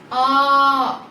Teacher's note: ஆ ங்குற நெடில் எழுத்துக்கு இரண்டு மாத்திரை அளவு அதே நேரம் நம்ம அதை அளபடையா மாத்தணும்னா அத நம்ம மூன்று மாத்திரை அளவு ஒலிக்கணும்